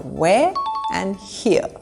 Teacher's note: The R is not pronounced in these words.